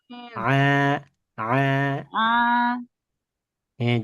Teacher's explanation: bacaan ain itu a, a, tengah tenggorokan ya.